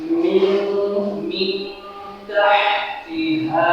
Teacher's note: তাহলে এখন আমরা নুন সাকিনটাকে কিভাবে উচ্চারণ করতে হবে? চন্দ্রবিন্দুর ন্যায় উচ্চারণ করব এবং নাকের পাশে থেকে গুণনা করে আমরা গোপন করে উচ্চারণ করব।